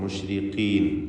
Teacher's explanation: ഏറ്റവും കുറഞ്ഞ തഫ്ഖീമാണ് ഖാഫിന് നൽകപ്പെടുക, കസ്റ ആയതുകൊണ്ട്